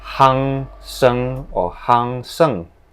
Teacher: If you can notice previously I say this word handsome, they will neglect the N sound and just say it as hāng shèng